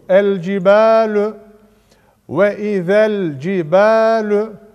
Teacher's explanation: Bakın z'yi ne yaptık? Lama bağladık. Yani okuduk. Ve izel şeklinde okundu. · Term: izhar-ı kameriye